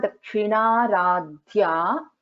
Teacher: then dha is a Mahaprana in dhya.